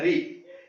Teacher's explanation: ये एकमात्र ऐसा स्वर है जो मूर्धा से बोला जाता है।